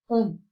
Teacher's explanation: you basically don't pronounce the N, you just like attempt to say the N and you say the O through the nose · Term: nasal